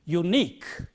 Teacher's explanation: the stresses on the last syllable in words like this